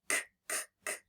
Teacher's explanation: ending is the C now is that a voice sound ckk when I feel my throat no it's not buzzing when I make ckk which means it's unvoiced